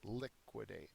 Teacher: it's the first syllable that is accented